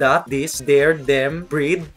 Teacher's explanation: there's no TH. It's either D sound like that, this, there, them, breed, or T sound like tick, tit, beneath, tissel, breath.